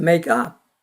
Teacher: make 강조하고 up 강조하지만 이 둘이 이렇게 수식관계를 이룰 때 더 강한 강세가 up에 있어요. 동사보다는 부사에.